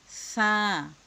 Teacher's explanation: সা বলতে গেলে জিহ্বার আগা সামনের উপরে 2 মোটা দাঁতের সঙ্গে লাগিয়ে বাহিরের দিকে বাতাসটা বের করে উচ্চারণ করে আনতে হবে।